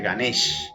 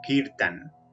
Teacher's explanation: se elimina siempre la A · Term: fonética hindi